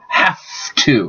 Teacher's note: But in this case, it is a regressive assimilation. So the V changes to F, so have to, because F and V are formed the same way. The only difference is the vibration in the throat.